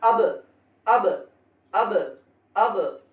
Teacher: اس طرح پڑھنا ہے کہ الف بھی الگ ہو جانا ہے اور با بھی، اس کو کہتے ہیں قلقلہ، یعنی ٹکر کھا کے الگ ہو جانا